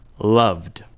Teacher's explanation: Love ends with the sound v. V is a voiced sound, so we pronounce the ed ending d.